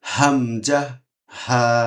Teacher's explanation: কন্ঠনালী শুরু থেকে উচ্চারিত হয়